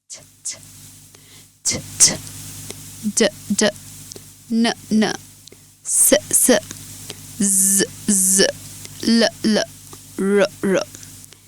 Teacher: প্রত্যেকটার place of articulation same, শুধু voice মডুলেশনের কারণে সাউন্ডগুলো ডিফারেন্ট হচ্ছে। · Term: অ্যালভিওলার